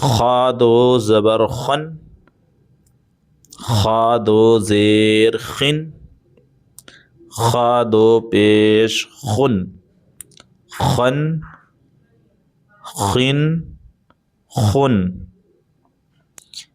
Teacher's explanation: خا دو زبر خن، ٹھیک ہے، اس کو ہمیں کھن نہیں پڑھنا ہے، اس کو ہمیں حلق سے ادا کرنا ہے، حروف حلقی میں سے آتا ہے یہ، تو اس میں طاقت بھی لگانا ہے۔